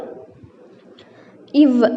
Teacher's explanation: இது மேல்வாய் பல்லை கீழுதடு பொருந்துவதால் பிறக்கிறது